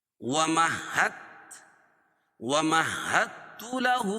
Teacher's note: ومحت، ومحت له الٹا پیش قائم مقام واو مدہ کے، اس کو ایک الف کے برابر کھینچ کے پڑھیں گے اور یہاں دال پڑھی نہیں جائے گی، ٹھیک ہے، ادغام ہوگا. دال کا تا میں ادغام ہوگا اور ہا کو تا میں ملائیں گے